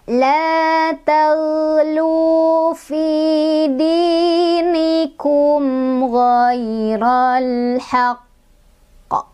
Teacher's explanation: Jadi dia mantul dan mantulnya nggak langsung keluar karena bertasydid, jadi kita tahan dulu 1, 2 baru keluarin gitu. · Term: huruf qalqalah yang bertasydid